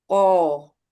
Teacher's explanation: Tengah lidah tidak tidak terangkat pangkal lidah terangkat